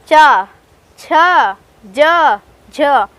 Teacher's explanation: जब हम चै का उच्चारण करते हैं तो उसमें तालव्य से टच होती है हमारी जीभ